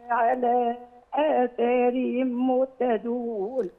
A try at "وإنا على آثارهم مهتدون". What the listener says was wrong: حاضر، أحييك على هذه القراءة، بس حضرتك تشبيع الغنة شوية بس.